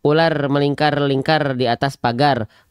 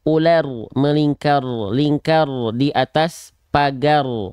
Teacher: Kalau R kan dia dilafalkan getarannya banyak.